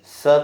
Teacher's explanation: जब स कहते हैं तब जीवा दात को स्पर्श करते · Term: दंत स